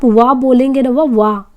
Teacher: तो यहाँ पे जैसे दंत प्लस ओष्ठ, यानी दांत और ओठ से मिला के अगर बोलेंगे तो वाह निकलेगा, और कंठ और ओठ से मिला के बोलेंगे तो ओ तथा औ है। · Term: दंतोष्ठ